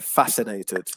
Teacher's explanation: with the word fascinated so the stress is on the first syllable